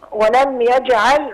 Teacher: الميم هنا حكمها ايه مظهره بتاخد اظهار شفوي